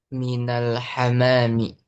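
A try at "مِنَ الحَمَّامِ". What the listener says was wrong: Ya, minal hammami. Ada tasydidnya ya. Minal hammami. Nanti kalau tanpa tasydid artinya merpati. Burung merpati tanpa tasydid hammam. Nah, bedakan pengaruh tasydid atau tidaknya. Kalau tanpa tasydid, hamam, hamamun, ya merpati. Jadi tasydid itu pengaruh.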